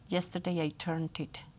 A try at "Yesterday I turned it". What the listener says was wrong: No es una T, es una D. Turned it. Turned it.